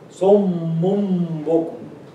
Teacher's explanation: And it's followed by ba. So the rule here is that you change the noon into meme. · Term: iqlab